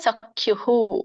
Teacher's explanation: ಸೊ ಅದು ಹಾಗೇನೆ ವಿಸರ್ಗ ಉಚ್ಚಾರಣೆ ಆಗತ್ತೆ. ಸಖ್ಯುಹು, ಹ ಅನ್ನೋದೇನಿದೆ ಹೂ ಅಂತ ಬರುತ್ತೆ